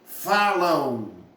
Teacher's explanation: falam é como se tivesse um U aí no finalzinho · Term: semivogais